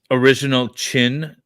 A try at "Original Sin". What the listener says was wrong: Is that how am I saying it right? Original Chin? Sin with a C. Sin. Original Sin.